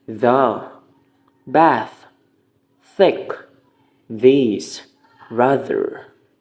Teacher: The air is forced through the tongue and the upper teeth. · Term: fricative